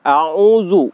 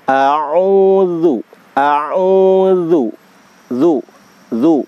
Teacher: Jadi tadi ya, jadi kalau kita menyebutkan ta'awudz terutama huruf za ya, itu rumusnya huruf za itu adalah huruf tarkik, huruf tipis, maka harus diucapkan dengan tersenyum ya. A'udzu, a'udzu, zu ya, bukan a'udzu ya.